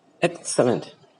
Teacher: Ek is the louder part, the most stressed part.